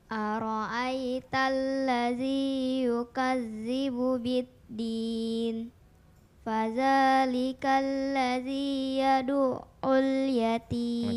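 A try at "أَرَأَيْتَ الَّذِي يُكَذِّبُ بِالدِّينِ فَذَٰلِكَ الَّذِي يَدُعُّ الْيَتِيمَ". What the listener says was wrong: Oke, tinggal ainnya yang diperbaiki ya. Yad'ul yatim.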